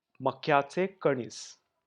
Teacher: The K is pronounced short and half along with Y.